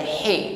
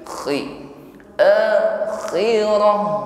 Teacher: Balla yakhafuna al-akhirah. Ya, tetap ada dengkur, ada suara ngorok, ada gesekan di dinding tenggorokan.